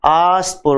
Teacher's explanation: सड़क वाला स, दंत से बोला जाता, तुलस दंत्य